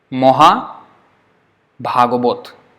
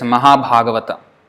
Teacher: the first one A is a short A, so it's O. But the second one is A, so that is A.